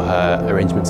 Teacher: when a word ends in the letter R, and followed by a vowel without a pause, the R is pronounced in British English